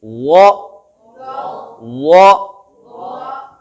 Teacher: زبان کی نوک سامنے اوپر والے دانتوں کے سروں کو لگ رہی ہے. زبان کی جڑ اوپر کی طرف جا رہی ہے، تالو کی طرف. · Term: بھاری